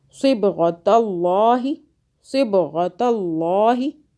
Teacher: با پہ قلقلہ کیا، با پہ یہ قلقلہ کا حرف ہے، جزم ہے